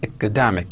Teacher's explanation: Academic. Stress on second syllable, academic.